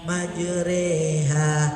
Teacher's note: Khusus fasoha bidang gharaib itu tadi, satu salah, kesalahan gharaib, nanti materi gharaib salah satu, majroha dibaca majreha, namanya bacaan imala iyalah, memiringkan bacaan antara fathah dan kasroh